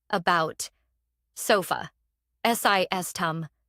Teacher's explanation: Americans collapse unstressed syllables into a soft, brief uh. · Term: schwa